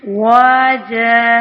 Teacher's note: جب ہم وقف کریں گے تو وقف کی صورت میں 1 زبر رہ جائے گا اور الف مدہ کی مقدار کے برابر پڑھا جائے گا